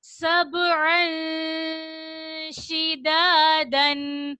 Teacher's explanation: नाक में हम छुपा कर अधूरा गुन्ना करते हैं। गुन्ना तो करते हैं लेकिन हम मुकम्मल गुन्ना नहीं करते, बल्कि अधूरा गुन्ना, यानी हम नून को मुकम्मल नहीं पढ़ेंगे, आधा पढ़ेंगे। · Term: इख्फा